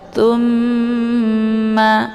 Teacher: Cara bacanya ditekan kemudian ditahan sehingga terbentuk suara yang mendengung. Tsumma ya, didengungkan. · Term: gunnah musyaddadah